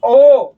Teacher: ओ उसमें भी गोल होगा, औ उसमें भी गोल होगा, यानी कि वृत्त का आकार ले रहा था। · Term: वृत्ताकार मुखी स्वर